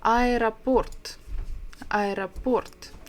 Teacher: The stress is on the last syllable, port.